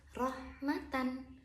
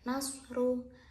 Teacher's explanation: Itu harus dibaca dengan Ro tafkhim atau Ro yang dibaca dengan tebal